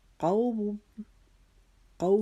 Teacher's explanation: قوم قو ہم پڑھتے ہوئے ہم نے ایک الف کے جتنا قو کو لمبا کیا کیونکہ یہ لین کا قاعدہ لگ رہا ہے